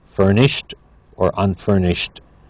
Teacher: with furnished it's a t at the end for the Ed ending